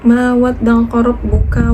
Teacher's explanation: Ma itu adalah matobi alif dibaca dengan panjang 2 harokat